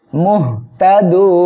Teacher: নুন সাকিন হয়ে যাবে আর এক আলিফ মদ এর পরের অক্ষরে ওয়াকফের কারণে সাকিন হওয়ায় তিন আলিফ টেনে পড়বেন